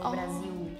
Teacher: when we have l words like in the end we usually change the sound of L to U